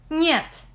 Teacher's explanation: N represents the consonants N and N corresponding to the English N in vine, but dental, that is, produced with the front of the tongue pressed against the upper teeth